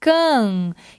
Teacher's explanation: Então, aqui, can, eu não pronuncio o N. Ele simplesmente está aqui para produzir o som nasal da vogal A.